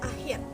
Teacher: Dibentuk dengan mendekatkan punggung lidah ke langit-langit lunak yang dinaikkan agar udara tidak keluar melalui hidung. Namun udara dikeluarkan melalui celah sempit dan keluar melalui rongga mulut. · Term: konsonan frikatif velar